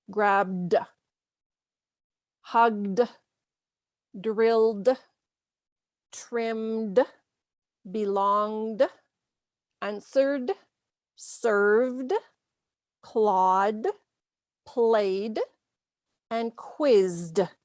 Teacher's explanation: So in all of those words that end with a voiced consonant sound, the ed sounds as d. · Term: ed ending